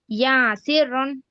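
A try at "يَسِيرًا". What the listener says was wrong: ఫథా అని చెప్తున్నారు కానీ దీర్ఘం తీస్తున్నారు. ఇక్కడ దీర్ఘం లేదు ఫథా యా ఉంటే దానికి దీర్ఘం తీయకూడదు కదా. ఓకే, యసీరన్.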